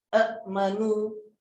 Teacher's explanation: Huruf hamzah pertama berbaris, huruf hamzah kedua bertanda sukun dan kadar bacaannya adalah 2 harakat saja. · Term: mat badalah